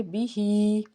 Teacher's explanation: ہا کے نیچے کھڑی زیر ایک الف کے برابر کھینچیں گے